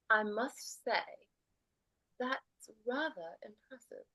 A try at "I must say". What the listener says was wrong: Can I have on say, um, must say, fully finish that word before you say the next one. I must say.